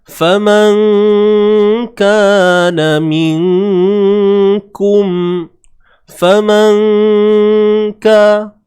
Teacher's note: Nun mati bertemu kaf, ikhfa haqiqi. Ikhfa, sembunyikan sebutan nun mati. Jangan sebut nun tepat pada makhrajnya. Sorok kan. Faman kana minkum.